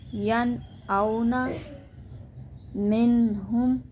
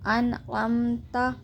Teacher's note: یہاں بھی نون کو ظاہر کریں گے، اظہار کا قاعدہ ہوگا کیونکہ نون ساکن کے بعد حرف حلقی میں سے عین آ گیا ہے